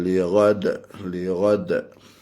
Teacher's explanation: Ketika wakaf situ kita qalqalahkan dal.